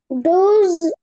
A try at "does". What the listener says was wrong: ডোজ না baby, এটাকে বলতে হয় ডাজ। ডাজ